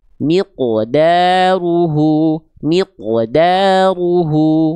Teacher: Jadi jangan sampai si qof sukunnya itu jadi tipis ya